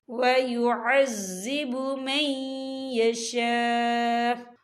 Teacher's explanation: وقف کی صورت میں حمزہ جو ہے ساکن ہو جائے گا · یہ مد جو ہے مد متصل ہے، اس کی مقدار جو ہے 4 حرکت کے برابر ہے، تو ہم اسے 4 حرکت کے برابر کھینچ کے پڑھیں گے، اور آگے دیکھیں آپ کو چھوٹی سی توئیں لکھی نظر آ رہی ہے، تو یہ فعل مطلق کی علامت ہے، تو یہاں پر ٹھہرنا بہتر ہے۔